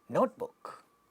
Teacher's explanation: Notebook, first one is getting stressed.